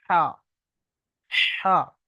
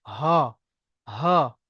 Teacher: বড় হার আওয়াজ হচ্ছে পাতলা আওয়াজ, হা। আর ছোট হার আওয়াজ হচ্ছে মোটা আওয়াজ, হা।